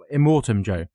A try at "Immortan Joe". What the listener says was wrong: I think it's Immortan with an N rather than an M. Immortan Joe. Immortan Joe.